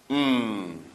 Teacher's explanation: our tongue is closing up near our alveolar ridge, and the air is escaping through the nose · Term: N sound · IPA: /n/